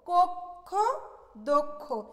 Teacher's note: ক্ষীয়টাকে যখন আমরা মুখে উচ্চারণ করব তখন সেক্ষেত্রে আমরা ক্ষীয়টাকে প্রথমে ক বলবো এবং তারপরে আমরা খ বলবো